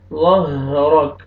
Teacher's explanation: را کے اوپر زبر ہے، را کو موٹا کر کے پڑھیں گے، کاف ساکن ہو جائے گا جب سٹاپ کریں گے.